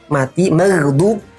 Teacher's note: Ghain ini terletak di kerongkongan bagian atas, sama dengan makhrajnya huruf kha.